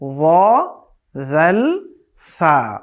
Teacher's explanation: জিহ্বার আগা সামনের উপরের দুই দাঁতের আগার সাথে লাগিয়ে। জিহ্বার এই জায়গাটা আছে টিপ অফ আওয়ার টাং, সামনের উপরে দুই দাঁতের জায়গা আছে টিপ অফ আওয়ার টিথ, এখানে লাগাতে হবে।